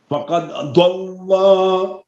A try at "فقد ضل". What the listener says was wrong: لام کو لمبا نہیں کرے فقد ضل سواء السبيل